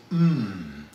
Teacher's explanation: all the sound is actually coming through your nose, can't come out anywhere else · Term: bilabial nasal